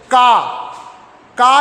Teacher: जैसे का के साथ क्या निकल रहा है? आ निकल रहा है, आ की ध्वनि निकल रही है। तो इसको अगर आप अलग किए, अलग कर दिए, तो ये व्यंजन क्या हो गया आपका?